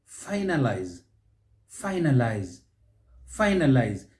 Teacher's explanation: stress is on that first syllable